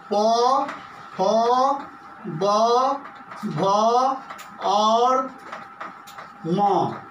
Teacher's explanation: ह्रस्व ऊ, दीर्घ ऊ, प, फ, ब, भ और म ओष्ठ से बोले जाते हैं